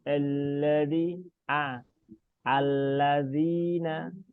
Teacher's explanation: coba hamzahnya agak dibuka mulutnya biar tidak seperti huruf E ya, bukan E.